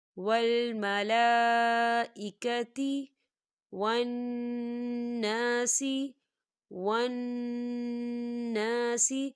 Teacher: نون مشدد ہے تو یہاں پر غنہ ہوگا، الف مدہ بھی ہو رہا ہے، خالی الف سے پہلے زبر ہے، تو ہم اسے دو حرکت کے برابر کھینچیں گے۔